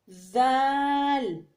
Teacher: زال کو زبان کی نوک اور ثنایا علیہ کا سرا ایک دوسرے سے ملا کر ادا کرنا پڑتا ہے